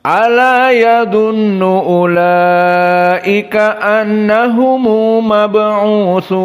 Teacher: Dari usul qiraah Abu Ja'far, jika dia mad wajib seperti di sini ulaika, maka datanglah mad tabi'i kemudian hamzah fi kalimah wahidah. Maka di sini dibaca dengan tawassut. Dan makna tawassut adalah 4 harokat. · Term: mad wajib muttasil